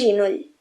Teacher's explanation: el contacte amb una consonant palatal fa que la vocal es transformi en una vocal palatal. Vaja, en una i.